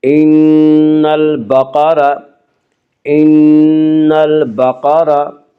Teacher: البقرہ قاف کو پر پڑھیں گے، قاف حروف مستعلیہ میں سے ہے۔